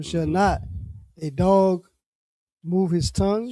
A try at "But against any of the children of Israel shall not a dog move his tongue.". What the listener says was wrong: Okay, so you doing it again. You're reading it like a question.